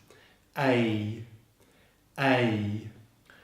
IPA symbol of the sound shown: eɪ